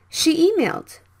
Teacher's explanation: The same E sounds, so you can skip one. She emailed.